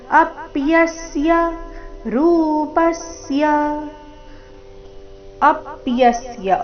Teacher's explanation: ಅಪ್ಯಸ್ಯ ಅ ಮತ್ತೆ ಯ ಮೇಲೆ ಆಘಾತ